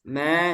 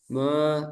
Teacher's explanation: Ma. Tipis. Ma. Jangan me nih. Me. Tapi ma.